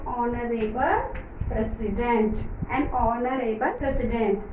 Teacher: ಹಾನರೇಬಲ್ ಅನ್ನಂಗಿಲ್ಲ, ಅದಕ್ಕೆ ನಾವು ಆನರೇಬಲ್ ಆ ಅಂತ ಉಚ್ಚಾರ ಮಾಡ್ತೀವಿ